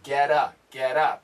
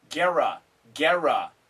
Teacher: it's a flap t and in america that sounds like a d not an r